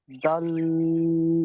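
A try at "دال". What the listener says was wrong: না, দাল নয়, দাল। দাল, এটা বলা আমি প্রথমে বলে দিলাম যে দাল বলে চেপে ধরবেন না। দাল বলে যান চেপে ধরছেন, জিভের আগাটা দেখেন উপরে দাঁতের ওই উপরে মাড়ির সঙ্গে চেপে যাচ্ছে, কিন্তু চাপলে হবে না। দাল পুরো মুখ খোলা থাকবে, দাল। দা বলে টেনে লাস্ট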